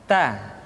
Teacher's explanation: Berikutnya huruf Ta. Keluar dengan menyentuhkan ujung lidah kita dengan gusi-gusi gigi seri bagian atas.